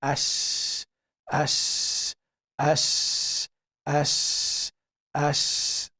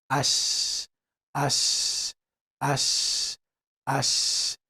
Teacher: So the middle of the tongue is touching the upper palate. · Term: Shiin